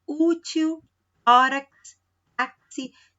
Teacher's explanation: Tem ali a penúltima sílaba mais forte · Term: paroxítonas